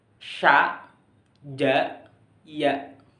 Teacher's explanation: Yang keenam yaitu palatal atau al-aswat al-hanaqiyah, yaitu keluarnya huruf dari langit-langit mulut dan tengah lidah